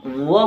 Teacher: आपके जो दांत है वो होट से टकराते हैं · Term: दंतोर